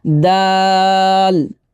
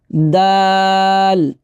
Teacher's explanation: 4 আলিফ পরিমাণ টান দিতে হবে আমাদেরকে দালে। দাল, দাঁতে যে টান দিয়ে লামে যে ধরবো, অনেকে দাল বলে ফেলি, দাল হবে না, হবে কি দাল।